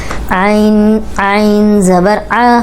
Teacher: हलक की तरफ पीछे जबान को दबाए तो यह निकल आएगा लेकिन झटके से नहीं निकालना नर्मी से ही निकलेगा